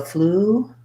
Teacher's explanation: We use a stopped T and we release right into the li. So fluently.